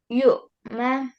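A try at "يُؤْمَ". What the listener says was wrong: Okay, don't make jerk on oin. Hamza Sakin needs a jerking sound. No, here, just make a soft jerk. Yu'ma. Yu'ma. For oin, yu'ma. And for Hamza, yu'ma.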